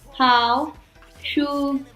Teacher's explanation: When followed by a first, second, or fourth tone, the third tone is pronounced as a half-third tone. This tone begins as a full third tone, but does not reach its lowest point. Therefore, the length is shorter than the full word tone.